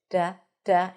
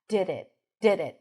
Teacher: less contact, less friction. Duh. Duh. And we hear that light tap.